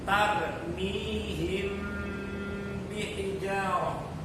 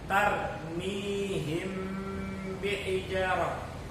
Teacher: apabila ada mim sukun bertemu dengan ba, maka mim sukun ini cara bacanya itu disamar-samarkan, dibingkemin. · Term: ikhfa syafawi